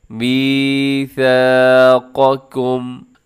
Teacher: قاف کو موٹا پڑھنا ہے، پھر اس کے ساتھ بالکل متصل جو دوسرا کاف ہے اس کو اپنے باریک کرنا ہے